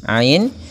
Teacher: panjangkan dua harakat karena dia ada huruf mad yang datang setelah huruf kasrah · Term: mad thi'i